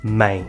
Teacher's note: o A lê-se ã e o E lê-se I. Não é maé, mas sim mãe.